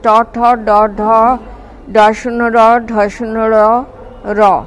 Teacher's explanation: জিহ্বার সম্মুখ প্রান্ত বা জিহ্বার শিখর শক্ত তালুতে শ্বাসবায়ু নির্গমনে বাধা দেওয়ায় মূর্ধন্য ব্যঞ্জনধ্বনি উচ্চারিত হয়।